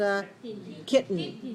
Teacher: tongue in the position for t and n and changing the sound from from oral to nasal kitten but our tongue does not move it stays on the